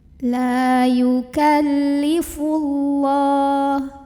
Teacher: huruf berbaris fathah maka lemnya kita panjangkan dua harokat layukallifullah [Musik] ada lamjalalah yang dibunyikan secara tafkhim karena huruf sebelumnya yang Va barisnya bomma maka bacanya tebal yukallifullah · La ada mad tabi'i karena ada alif yang sebelumnya didahului huruf berbaris fathah, maka lamnya kita panjangkan 2 harokat.